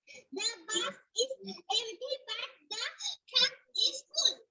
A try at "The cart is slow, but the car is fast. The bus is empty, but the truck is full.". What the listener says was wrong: Excellent, ভালো ছিল।